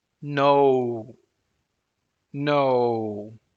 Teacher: glide here in the pronunciation let's say it slowly no no you see that your jaw moves up and your lips are around and closed and there is this glide between two vowels · there is this glide between two vowels like oh